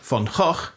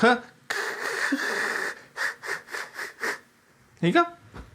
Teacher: actually, it's pronounced in exactly the same place as sounds like K and G. The only difference is that instead of stopping the air completely and then letting it out in a little burst, you constrict the space between the tongue and the soft palate and make a friction noise instead. · This sound is called a velar fricative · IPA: [x]